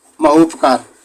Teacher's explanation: दीर्घ आ और ह्रस्व ऊ दोनों मिलके ओ बनाएंगे तो यहाँ पे इनका जो है संधि होगा, ये संधि होगा। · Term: गुण संधि